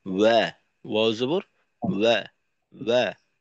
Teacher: অনেক সময় আয়াতের শুরুতে ওয়াও এর উচ্চারণ থাকলে আমাদের উচ্চারণটা ও হয়ে যায় আর কি।